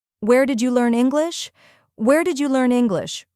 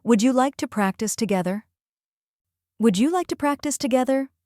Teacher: Feel how your voice rises at the end of questions? That's natural English intonation.